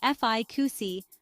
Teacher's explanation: a desired result often in medicine or treatments pronounced fi CI with stress on the first syllable